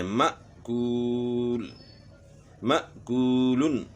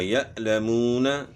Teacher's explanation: اگر ساکن ہے، حمزہ ساکن ہے، تو اس میں پھر جھٹکے کی آواز ہوگی